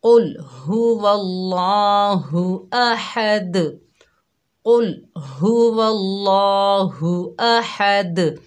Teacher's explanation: कुल यानी मोटा काफ पढ़ेंगे और लाम को बिल्कुल भी नहीं हिलाना अपनी जगह से · काफ मोटा पढ़ेंगे, हा को सही पढ़ेंगे, अल्लाह के लाम को मोटा पढ़ेंगे, हा को हलक के दरमियान से अदा करेंगे, दाल पर कलकला करेंगे